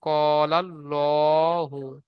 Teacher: আল্লাহ শব্দের ডানদিকে জবার এসেছে তাই আল্লাহর লামকে পুর করে পড়তে হবে